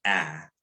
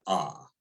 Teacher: the default letter A phoneme in Arabic is pronounced a, not ah